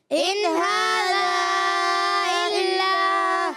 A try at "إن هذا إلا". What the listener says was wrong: اچھا، کسی بچے کی آواز آئی ان هذا، نون کو ہلانا نہیں ہے۔ ان هذا إلا